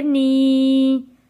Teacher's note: یا ساکن ہے، یا ساکن سے پہلے زیر ہے، اس لیے ہم نے اس کو 1 الف کے برابر کھینچ کر پڑھنا ہے